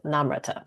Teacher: the emphasis is on the first syllable and I think that's not natural to maybe most Americans